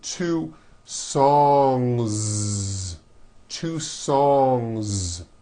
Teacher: voiced Z ending song ends with a voiced ng sound so if you make it plural don't forget to add a voiced Z ending